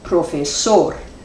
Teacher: cuando tenemos el acento prosódico sobre la última sílaba se llama una palabra aguda